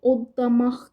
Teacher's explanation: Odlamaq sözündə oddamaq kimi tələffüz olunur